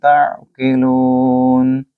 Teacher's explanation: اس کے بعد تعقلون، یعنی کہ تا کو آئین کے ساتھ ملائیں، آئین کے اوپر جزم کی علامت ہے، اور لو کو لمبا کریں 2 سیکنڈ کے لیے کیونکہ یہاں واو مد ہے اور یہاں وقف تام. لو نا نہیں کہیں گے بلکہ لون کہیں گے